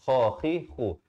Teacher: Kha saya beritahu tadi di hujung kerongkong.